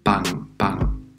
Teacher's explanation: al principio de palabra suena como una p no la inglesa que echamos algo de aire es la p española